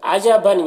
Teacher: تنوین کے بعد حمزہ ہے تو تنوین میں اظہار حقیقی ہوگا، اسے جلد پڑھنا ہے